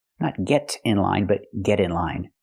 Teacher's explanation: We hear the pronunciation of T change to a fast D because it's between vowels.